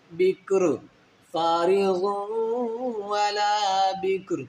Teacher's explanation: یہ جو را آخر میں ہے، یہ سٹاپ کی وجہ سے ساکن ہو رہی ہے